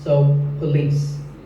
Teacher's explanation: This isn't police or police. It's pa and lease, with the stress on lease.